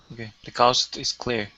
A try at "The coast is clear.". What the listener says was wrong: Instead of coast with an ow, it's o. Okay, go to that o first, then to the oo. The coast is clear.